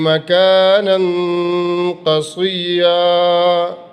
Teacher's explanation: نون کی تنوین پہ اخفا کریں گے، جب اگلے لفظ سے ملائیں گے تو اخفا کریں گے